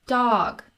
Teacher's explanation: see those triangles pointing at each other that indicates length so even though this is called a short vowel it's actually a longer sound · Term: short o, short O